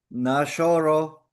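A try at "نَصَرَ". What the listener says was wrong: Jangan jadi show. Si makhrajnya. Has. Bukan hash. Ha. Show. Nah, ini kan jadi sya. Walaupun keluarnya O. Jadi bukan O-nya, tapi makhrajnya.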